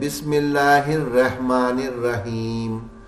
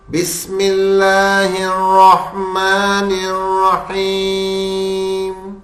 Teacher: راہ کو موٹا کرتے ہوئے ہا کو ملائیں گے